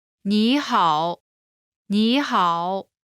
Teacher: When there are two third tones in a row, the first one changes to the second tone.